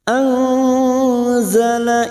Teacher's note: nun sukun bertemu zain ikfa hakiki, kita samarkan bunyi nun sukun dan mendengung selama 2 atau 3 harokat